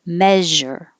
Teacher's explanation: make sure you have the sh in the middle it's like shh but with voicing